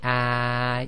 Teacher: if you say ah you'll notice your tongue goes almost completely flat all the way from the front to the back